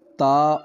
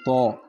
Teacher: اگر بعض حروف ایسے ہیں جن کی اگر صفات کا تعین نہ کیا جائے تو پھر وہ حروف مکمل طور پہ تبدیل ہو جاتے ہیں، جیسے لفظ تا اور تو جن کا مخرج ایک ہے، دونوں ایک جگہ سے ادا ہوتے ہیں لیکن ان کا تعین صفات سے ہوتا ہے۔ اب تا میں صفت استفعال پائی جاتی ہے، یعنی اس کو ہم باریک پڑھتے ہیں، اور تو میں صفت استعلاء پائی جاتی ہے، اس کو موٹا پڑھتے ہیں